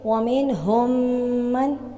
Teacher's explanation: میم ساکن کے بعد میم آ رہا ہے تو اب ہم اس کو مشدد انداز میں پڑھیں گے، اور نون ساکن کے بعد ہا آ رہا ہے یعنی حروف حلقی میں سے، تو اب ہم یہاں پر اظہار کا قاعدہ بھی اپلائی کریں گے